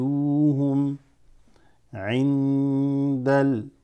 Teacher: Noon sakina followed by dal. So that's ikhfa.